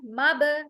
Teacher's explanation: मब आवाज को हम जर्किंग साउंड के साथ एको करेंगे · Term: खलखला